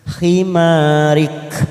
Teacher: Karena kita wakaf di sini maka huruf kaf mempunyai sifat hamas.